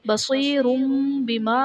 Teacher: تنوین کو میم سے بدل کر اخفا کریں گے، یعنی غنہ کر کے پڑھیں گے، یہاں اقلاب کا قاعدہ ہوگا۔